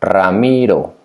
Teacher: It starts with one R, is ra, mi, ro, the one hit, the light sound. Ramiro, it has the strong sound at the beginning because it starts with R, and the light sound in the middle because it's, whenever you see an R in the middle of a word is the light sound.